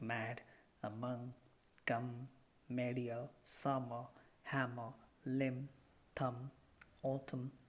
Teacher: Soft palate is now lowered to allow the air to come out through the nose. So it is a nasal sound.